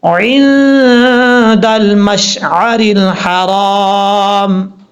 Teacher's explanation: دال حروف اخفا میں سے ہے تو کیا ہوا، یہاں پہ نون ساکن کا اخفا ایک الف کی مقدار غنہ کر کے پڑھیں گے